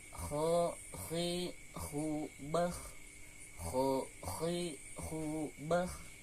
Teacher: huruf ko sama seperti gin yaitu dari adnal halqi juga dari adnal halqi itu ujung tenggorokan